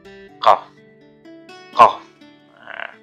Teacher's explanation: pangkal lidah yang ada di belakang itu diangkat gitu ya